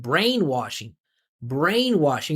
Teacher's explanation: And he should put the emphasis on brain.